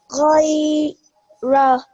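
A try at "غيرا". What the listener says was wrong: Very good. Well done.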